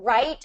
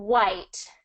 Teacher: right with the R and the R is going to be with that tongue pulled back to the back of your mouth. White has the tongue flat and pretty relaxed. And it's the lips that are doing all the work for white.